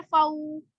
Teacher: हरूफ लीन को नरमी से, बगैर खींचे, बगैर झटका दिए, मारूफ तरीके से, मतलब अच्छे तरीके से पढ़ा जाएगा।